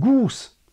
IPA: guːs